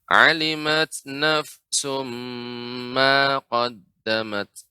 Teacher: Ma tidak dibaca dengan panjang, Ibu.